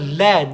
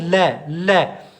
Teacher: जैसे आप लय को बोलोगे हमारी जो जीभ है उसके बराबर से ये आवाज निकलती है लय की। बोलो बच्चों लय, लय यानी जीभ के बराबर से निकलता है, बराबर का मतलब पार्श्विक, पार्श्विक, ठीक है बच्चों?